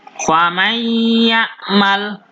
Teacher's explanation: Contohnya, yang nun sukun bertemu ya, faman ya'mal. Berarti kita masukkan langsung ke huruf ya dan kita berdengung. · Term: idgham bi gunnah